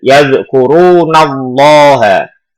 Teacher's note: Jadi ketika ada lafaz jalalah sebelumnya ada huruf yang berharokat fathah ataupun dhammah, maka itu lafaz jalalahnya dibaca tafhim, artinya adalah tebal.